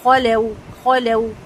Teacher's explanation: وَإِذَا خَلَوْا میں خلو کو میں خو کو اچھے سے پر کریں گے، خَلَوْا ٹھیک ہے، اور لام کو لائٹ رکھیں گے اور واو کے لیے ہونٹ مکمل گول ہوں گے اور کھینچیں گے نہیں، خَلَوْا نہیں پڑھیں گے، ٹھیک ہے، خَلَوْا۔